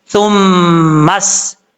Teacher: सा मीम पे सुम, मीम सीन जबर मस। जब मीम को सीन से मिलाएंगे तो ये अलिफ भी छोड़ देंगे